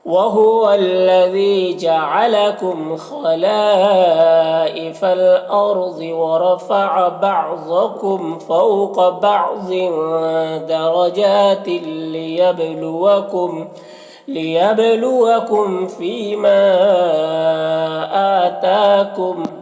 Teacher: دونوں میں کھڑا زبر ہے، ایک الف کو برابر کھینچیں گے، کم کے میم اظہار شفوی ہوگا، اسے جلد پڑھنا ہے